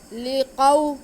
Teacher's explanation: موسیٰ، وَإِذِ اسْتَسْقَىٰ مُوسَىٰ لِقَوْمِهِ، لام کے نیچے زیر، قاف پہ زبر اور واو ساکن۔ تو یہ واو ساکن سے پہلے زبر ہے، تو یہ واو لین ہے، اس کو ہم نے بالکل نہیں کھینچنا۔